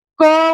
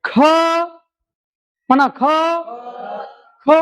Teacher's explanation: क म्हणत असतानी होतो का मग क आहे अल्पप्राण ख आहे महाप्राण